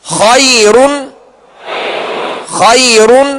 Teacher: را ساکن سے پہلے یا ساکنہ ہے لہذا اب را کو وقف کی صورت میں باریک پڑھیں گے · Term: را کو باریک